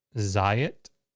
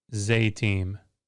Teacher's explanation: If the ending eem is added to the word and the accent shifts, aya will go to a lim. So the aya vowel pattern shifts to a.